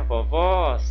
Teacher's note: a última sílaba é a mais forte é a sílaba tônica mas só que o som desse caso de vovós o som é aberto